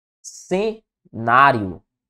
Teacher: a sílaba tônica é a penúltima, portanto, uma paroxítona. Paroxítona, lembrando sempre, terminada em ditongo, nesse caso, né?